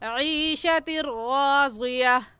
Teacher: ईशतिर में तनवीन के बाद हरूफ यरमलून में से रा आ गया है, इसलिए इस तनवीन पर हम गुन्ना नहीं करेंगे और ऐसे कहेंगे ईशतिर राज़िया।